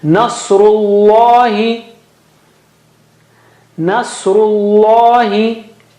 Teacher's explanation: Saw is very thick and high. Very thick and high.